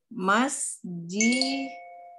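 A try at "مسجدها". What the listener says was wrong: Aywa masjiduha. Benar ya, masjiduha. Nah, ahsanti sahih.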